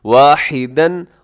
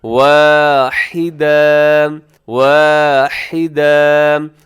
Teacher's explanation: 2 زبر کی تنوین پر جب وقف ہوتا ہے تو اسے الف کے ساتھ چینج کر دیا جاتا ہے، یعنی الف کی طرح پڑھا جاتا ہے، واحدن، اور وقف کریں گے تو واحدا، واحدا۔